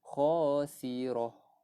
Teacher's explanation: Ta marbutah sini kita matikan. Bila mana ta di akhir perkataan dan kita berhenti kat itu, ta ni akan jadi huruf ha